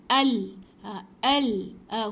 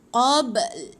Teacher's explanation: Dia punya makhraj ataupun tempat huruf tu keluar, hujung lidah kita tekan dekat lelangit belah atas. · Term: makhraj huruf lam